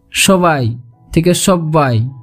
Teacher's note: দ্বিমাত্রিকতা ও ব্যঞ্জনদ্বিত্ব রাঢ়ী উপভাষায় লক্ষ্য করা যায়